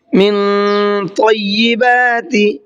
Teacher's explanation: من طیبات، من نون ساکن کے بعد میں طا ہے اور طا بھی حروف اخفا میں سے ایک حرف ہے تو یہاں پر اخفا بھی کریں گے اور ساتھ ساتھ طا کو منہ بھر کے بھی پڑھیں گے